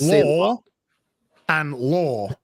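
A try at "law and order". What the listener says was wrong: Did you just say lore and lore? Lore and law. Horror and horror.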